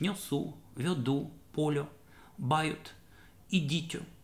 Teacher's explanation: Для северного наречия характерно так называемое «йоканье», это произношение безударного «о» после мягких согласных.